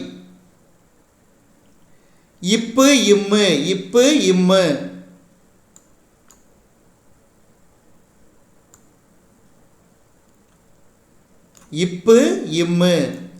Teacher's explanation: மேல் இதலும் கீழ் இதலும் பொருந்துவதால் பிறக்கும் மெய்யெழுத்துக்கள்